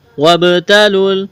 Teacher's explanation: با پر قلقلہ کریں گے۔ قلقلہ کہتے ہیں ساکن حرف کو ہلا کر پڑھنا۔